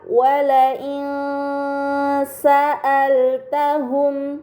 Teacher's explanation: Pada kata wala in sa'altahum terdapat nun sukun bertemu dengan huruf sin. Ini dinamakan ikhfa hakiki, maka nun sukun dibaca secara samar dengan gunnah yang dipanjangkan